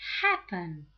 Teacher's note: We notice that happen has the stress on the first syllable, right? So we don't double the last consonant.